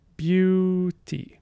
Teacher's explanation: we have a stop we have a semi vowel we have a vowel we have a stop and a vowel